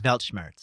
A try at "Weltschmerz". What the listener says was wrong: Weltschmerz with a T. T sound.